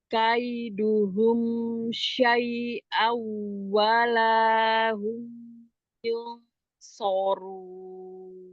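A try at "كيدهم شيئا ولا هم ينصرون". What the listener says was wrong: Di syai awalnya wawnya roghah ya, disambung ya. Kaiduhum syai'aw wala. Nah itu, jadi jangan diputus. Jangan syai'aw wala gitu kan. Jadi kayak ngejut ya di walanya. Disambung. Syai'aw wala.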